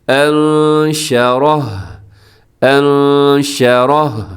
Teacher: وقف میں خیال رکھیے گا کہ ہا کا ساؤنڈ بھی آنا چاہیے، یعنی پتہ چلے کہ آپ نے ہا پر وقف کیا ہے